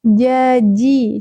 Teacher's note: huruf jad tengah lidah menyentuh langit-langit. Jaji. Jadi bukan ji, bukan ji.